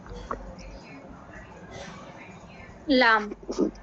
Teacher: زبان کا سیرا اور تالو کا اگلا سخت حصہ. ٹھیک ہے, زبان کا سیرا اور تالو کا اگلا سخت حصہ جس سے ادا ہوتا ہے